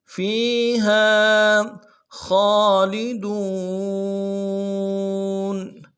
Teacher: اس کو بھی ایک مقدار میں کھینچیں گے، ہا فیہا خالدون، خا کے اوپر کھڑا زبر ہے، ایک مقدار میں کھینچیں گے